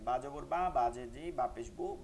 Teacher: জের বি বা পেশ বু একদম বাংলায় এটা উচ্চারণটা সহজ আছে দুই ঠোঁটের ভিজা জায়গা থেকে স্বাভাবিকভাবে করে যাবেন